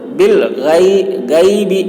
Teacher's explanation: غین کو موٹی آواز میں ہم بول رہے ہیں